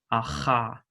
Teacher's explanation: i'm doing this as a voiceless uvular fricative